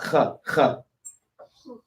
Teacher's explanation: the kha, the H one should be at the top of your throat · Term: guttural sounds